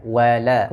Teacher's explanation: huruf lam jangan sampai terbaca tebal karena ada huruf dhad setelahnya tapi dijaga ketipisannya